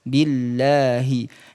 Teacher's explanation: lafad Allah itu ketika didahului dengan harakat kasrah maka dibaca tipis